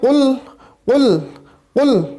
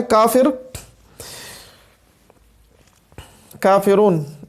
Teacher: اب لاسٹ میں جو کافرون کے اندر آ رہا ہے کافر، کافرون، اس کے اندر یہ باریک کے اندر آتا ہے، ٹھیک ہے جی۔ قاف جو ہے یہ موٹے حروف میں آتا ہے اور کاف جو ہے یہ باریک کے اندر آتا ہے